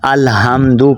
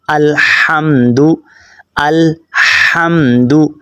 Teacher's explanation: ہا حلق کے درمیان والے حصے سے ادا ہوتا ہے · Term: ہا باریک ہے